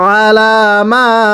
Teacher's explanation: মিমের মধ্যে তিন আলিফ টানতে হবে।